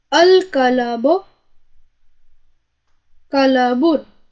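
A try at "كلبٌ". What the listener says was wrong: لام کو ساکن کیجیے. کلابن نہیں، لام پہ زبر مت پڑھیے.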